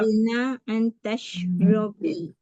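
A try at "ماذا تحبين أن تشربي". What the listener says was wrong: Panjangkan sikit ukhti. Madza tuhibbina an tashrabi? Coba dengan stressing Arabic yang benar. Madza tuhibbina an tashrabi? Madza tuhibbina an tashrabi?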